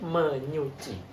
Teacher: fonem s dan juga fonem n itu pasti berada di daerah artikulasi yang sama · Fonem S itu memiliki daerah artikulasi yang sama dengan fonem NY, yaitu pada laminopalatal